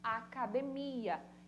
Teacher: A última sílaba, uma oxítona.